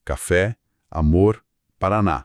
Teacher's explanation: As oxítonas, com a força na última sílaba.